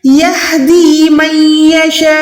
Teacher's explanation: شین زبر شاہ کو آپ نے 4 سیکنڈ کھینچنا ہے